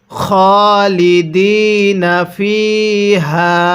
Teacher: পরে ইয়া সাকিন এক আলিফ টানতে হবে। তাহলে খালিদিনা ফিহা এরপরে।